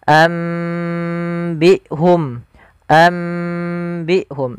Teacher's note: Yang pertama dengan itbaq yaitu dengan merapatkan bibir secara utuh